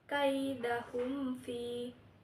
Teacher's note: izhar syafawi yaitu mim mati bertemu dengan fa dibaca jelas